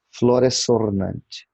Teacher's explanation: O S final é forte, ainda que preceda a palavra que se inicie por vogal.